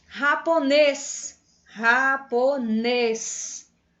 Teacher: Nes, bem forte. Então, esse nes, pessoal, é agudo, é a sílaba tônica, aquela mais forte